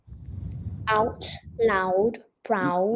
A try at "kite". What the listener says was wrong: No, that's wrong. That's the wrong sound. You're doing ow. I want I.